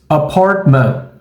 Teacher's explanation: Você vai ter o som do schwa logo no começo da palavra apartamento e ao final. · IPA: ə